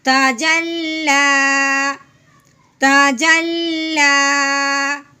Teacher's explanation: وقف کی صورت میں صرف ہم نے اپنا لہجہ نیچے کو لے کے آنا ہے